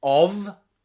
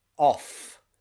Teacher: one is voiced, the v, and one is voiceless, the f. Okay? That means that one is using your vocal cords and one is not.